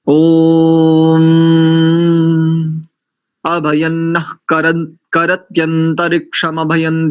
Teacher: ये, और संहिता में यहाँ पर नकार के बाद जो विसर्ग है ना, उस विसर्ग को जिह्वामूल्य हो जाएगा